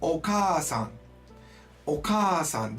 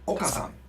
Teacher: Okay, so if you have a double vowel, for example, in that word we just did, okasan, there is an A which is doubled, right? All that means is we lengthen the sound.